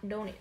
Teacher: trọng âm không rơi vào O, đương nhiên nó rơi vào âm tiết thứ hai. Âm tiết thứ hai của cô là âm A nguyên âm đôi.